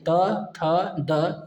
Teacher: त थ द ये सभी का दंत से होता है